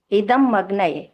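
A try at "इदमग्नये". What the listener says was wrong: अभी भी अग्न अलग कर रहे हो इसीलिए फिर भी गलत कहलाएगा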